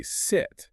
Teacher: sit has that shorter, more clipped I sound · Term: short i